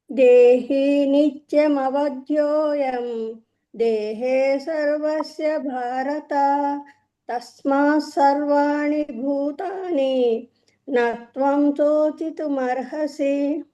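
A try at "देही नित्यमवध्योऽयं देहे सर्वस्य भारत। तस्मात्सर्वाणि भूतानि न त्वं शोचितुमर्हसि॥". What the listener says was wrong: బాగుందమ్మా, good good, thank యూ.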